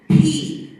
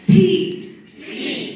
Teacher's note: On top of that, the P in English is different from the P in Vietnamese because the P in English is aspirated in the beginning of a word. There's a big puff of air. So for example, P, you can actually hear the puff of air in the microphone, right?